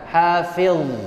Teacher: Dha di situ dia tidak boleh mantul. Hafiz, dan dha sifatnya tebal. Karena tebal maka hafiz. Tidak boleh sambil tersenyum hafiz.